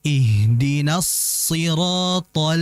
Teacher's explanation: Kemudian berikutnya juga adalah jangan sampai karena th-nya ini tebal alqamariyah thol alnya itu ikut ikut keikutan tebal. Ini salah karena th-nya ini tebal al-nya itu tipis. · Karena ta-nya ini tebal, al-nya itu tipis. Ihdinas siratal, bukan tol, bukan.